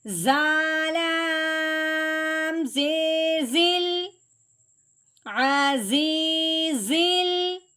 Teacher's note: اب لام ساکن ہے جس کی وجہ سے ہم نے زا کو لام ساکن کے ساتھ ملانا ہے، الف نہیں پڑھنا